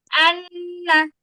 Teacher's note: এটার উচ্চারণটা হবে আনা। এইযে আমি আন বলে ধরে রাখলাম। আর নাকের মধ্যে একটা গুনগুন করলাম। এইযে নাকের মধ্যে গুনগুন করা। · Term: গুন্না